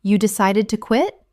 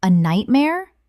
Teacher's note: Utilizing a rising intonation, this invites them to elaborate on their reasons.